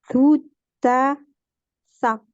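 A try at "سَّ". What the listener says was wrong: Ouais, juste là, il y a une shadda, alors on dit bien ça. Ouais, voilà, faut juste appuyer. Juste, fais attention de bien faire comme le S en français. Là, il n'y a pas de ça. C'est vraiment un S.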